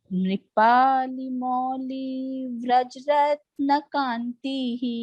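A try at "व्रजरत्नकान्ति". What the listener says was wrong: ब्रज नहीं, हिंदी को छोड़ना पड़ेगा. ब्रज.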